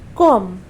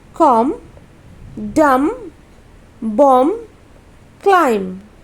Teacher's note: तो right pronunciation will be कॉम। M तक का ही उच्चारण हम लोग करेंगे, बी का उच्चारण नहीं करेंगे। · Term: B is silent